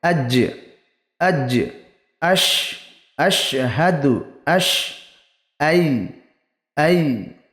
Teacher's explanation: জিভের মাঝখান ও তার বরাবর উপরের তালুর সাথে লাগিয়ে উচ্চারিত হয় জিম, শিন, ইয়া। এগুলোর মাখরাজ এরকম হবে আজ, আজ, আশ, আশহাদু, আশ, আই, আই।